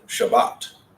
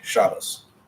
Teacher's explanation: If we're Ashkenazic, as it shows you in this book, it'd be Shabbos. They take the tav, they soften it to an S if it's at the end of a word in Ashkenazic, and they put the emphasis on the first syllable.